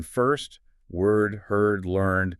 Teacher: So the vowels in first, word, heard, learned, they all have that R quality baked into them